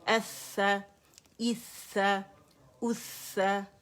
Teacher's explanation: اس میں سپلٹس of second کا پاز نہیں کیونکہ اس میں شدہ نہیں ہے، اس میں آواز چلے گی